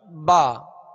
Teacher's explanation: با کا جو مخرج ہے مخارج کی لسٹ میں آپ دیکھیں گے کہ دونوں ہونٹوں کے تر حصے سے با ادا ہوتا ہے. اس کو با یعنی خشک حصے سے ادا نہیں کریں گے بلکہ با.